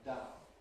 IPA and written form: daʊn (down)